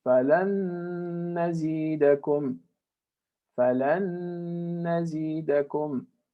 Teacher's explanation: we're going to merge them and do 2 harakat of ghunna